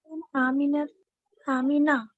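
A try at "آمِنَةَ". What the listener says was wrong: आमीनता. आखिर में हरकत को जाहिर करें. आमीनता. ये गैर मुनसरिफ है कि नहीं है पहले ये बताइए. मिन के बाद है तो मिन हर्फ जर है, प्रीपोजिशन है.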